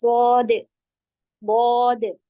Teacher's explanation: सोद आखिर में कलकला जैसा होगा